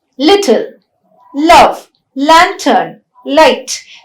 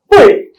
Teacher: At the beginning of a word, it is a clear l. At the end of a word, it is called the dark l